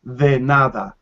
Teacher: the d in spanish is softer the nada it's like the sound we make in english with the th combination when we say this that those so that it's very closer it's not quite the same but